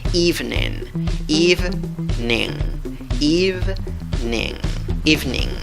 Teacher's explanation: I, una i larga que se ríe. En la segunda sílaba hay una i, pero es una i cortita. · La fuerza de voz va en la primera sílaba, contando de izquierda a derecha.